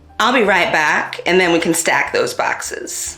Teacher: bat retraction or the a vowel being pronounced further back in the mouth